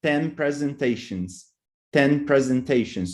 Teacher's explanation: the N became an M sound because of the p bilabial and now you have a bilabial there too